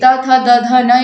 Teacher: जब आपके ऊपर वाले दांतों पर जीभ लगे और उस उच्चारण स्थान को हम क्या कहेंगे, दंत्य कहेंगे